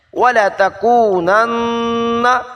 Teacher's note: نون مشدد، غنہ ضروری ہے